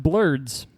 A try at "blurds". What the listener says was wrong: It sounded like you pronounced it with a U. Yeah, same. Bleards?